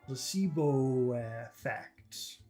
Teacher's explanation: the O from Placebo and the E from effect combine so actually it just becomes one very long vowel sound placebo effect so I think everything becomes long except for plot